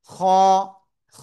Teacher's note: খ, মোটা আওয়াজে মাত্র এক আলিফ টানিয়া পড়তে হবে। এটা চিকুন আওয়াজ না কিন্তু, যারা খা বলবেন তাদের কিন্তু ভুল হবে।